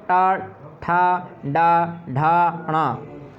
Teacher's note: इनको मूर्धा से निकाला जाता है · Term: मूर्धन्य वर्ण